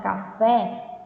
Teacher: ela é uma oxítona ou seja a sílaba mais forte é a última